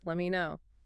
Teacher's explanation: The T in let drops before the M and me reduces let me know. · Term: Standard reduction